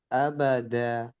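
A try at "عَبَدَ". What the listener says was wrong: দেখেন, মুখ খুলে গেছে। মুখ কেমনে খুলে গেছে, আপনাদেরকে আমি এভাবে দেখিয়েছিলাম যে উচ্চারণটার মাপ একটা আছে। এ, বে, দে, এক মাপ। আবাদা, মুখ খুলে গেছে, এরকম হবে না। এবেদে, বেঁকে যাবে না। এ, বে, দে, আ, বা, দেখছেন আওয়াজ ছড়িয়ে যাচ্ছে, আওয়াজ ছড়াবে না। এই সবগুলো মিলেই শুদ্ধ।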